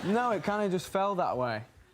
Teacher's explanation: actually oftentimes drops both sounds in the word that and pronounces it just as a instead of that